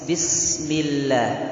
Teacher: tidak menghilangkan sifat shafir dan rakhawah pada huruf sin